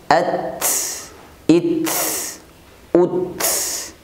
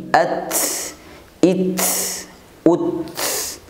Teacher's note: adapun sisa bunyi di akhir adalah merupakan bunyi hamas atau hembusan nafas karena ta selain memiliki sifat syiddah dia juga punya sifat al-hamas.